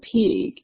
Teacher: The vowel in the word pig is lengthened because it is followed by a voice phoneme